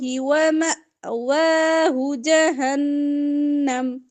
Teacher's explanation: حمزہ پہ جزم ہے جھٹکا